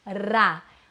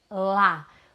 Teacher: É isso que difere o R do L, a vibração da ponta da língua.